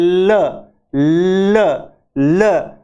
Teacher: हमारी जो है जब एल को बोलते हैं ल ल ल तो ल जुबान तो हमारी लगती है एल्वियोलर, मसूड़े पे जाके लगती है। और जुबान के दोनों लेटरल, दोनों साइड से हवा पास हो जाती है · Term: लेटरल और एल्वियोलर